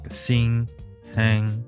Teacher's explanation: The alveolar nasal sound can be found in the onset of English words like nut, none, niece, etc. The velar nasal sound can be found in the coda of English words like sing, hang